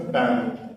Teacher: Sometimes some consonants like the L here, they become vowels over time under the influence of different speakers. And in English, that A-L becomes a long A sound.